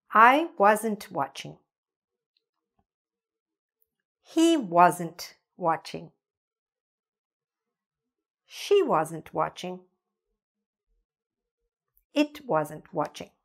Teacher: if you are trying to say, I wasn't watching, but you don't say the ending t, then it'll sound like I was watching.